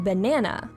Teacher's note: In the word banana, the second syllable is accentuated or stressed.